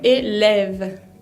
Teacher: se pronuncia como colocando la boca para decir una A, abriendo la boca, pero diciendo E, y se pronuncia E.